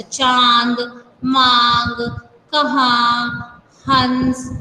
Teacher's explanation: इन वर्णों के उच्चारण में हवा नाक और मुंह दोनों बाहर निकलती है। इसका चिन्ह है जैसे चंद्र बिंदु वाला चिन्ह है, जैसे चांद। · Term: अनुनासिक